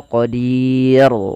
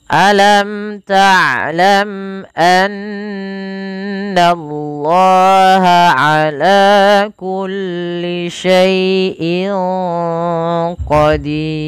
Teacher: huruf ra itu tidak boleh dibaca ra-nya tebal. Ra di sini kita hukumi dengan ra yang tipis. Kenapa? Karena huruf ra-nya dimatikan dan sebelumnya ada huruf ya dan ada huruf kasrah.